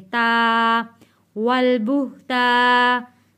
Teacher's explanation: अलिफ से पहले ज़बर है, तो इसलिए हम इसको एक अलिफ के बराबर खींच कर पढ़ेंगे। ता, वल बुहता।